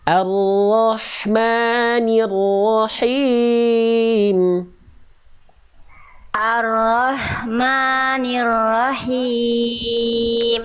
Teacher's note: Tuntaskan dulu ro-nya Bunda. Ro tasdid kedua tuntaskan dulu kadar tasdidnya, tekan.